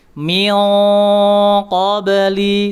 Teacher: riqon qolu diberikan disamarkan nun nun sakun atau tanwinnya disamarkan terlebih dahulu tanwinnya kemudian ee diarahkan ke huruf qof dan diberikan sifat tebalnya rizqon qolu kemudian min qobli min qobli tidak boleh itu terlalu terlalu tipis. Dia harus tebal mengikuti sifat huruf tebalnya.